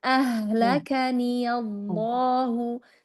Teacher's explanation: pada lafzul jalalah mau lebih gemuk lagi. Ya, karena dia lafzul jalalahnya tafkhim ya.